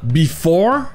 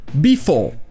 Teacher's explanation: si on va du côté de l'anglais d'Angleterre, c'est-à-dire l'anglais général, celui qu'on trouve dans les dictionnaires d'anglais, le R sera muet. Donc ça ne sera pas before, avec le son re, ça sera before, sans le R, before.